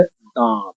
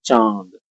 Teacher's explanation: देखा होगा आपने, सब आवाज जो है हमारी हवा नाक से निकलती है। जब हम अनुनासिक को बोलेंगे, चंद्र बिंदु वाले मात्रा वाले शब्द को, तो उसको हम नाक और मुंह दोनों से बोलेंगे